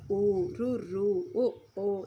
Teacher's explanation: పెదవులు గుండ్రంగా ఉన్నప్పుడు పుట్టే అచ్చులు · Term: ఓస్టాచ్చులు